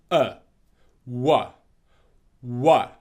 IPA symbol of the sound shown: w